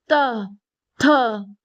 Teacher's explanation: जो जीभ है ना वो कहाँ टकरा रही, दांतों दांतों पे टकरा रही ना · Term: दंत वर्ण